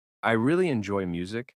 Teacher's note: in I really enjoy music, the word really is emphasized to show passion.